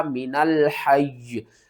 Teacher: یا کے اوپر سختی کر کے وقف کرنا ہے۔ · یا کے نیچے جو زیر ہے اس کو آپ نے ختم کر دینا ہے وقف کی صورت میں